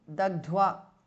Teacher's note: Dagdhva, second dha is mahapranah.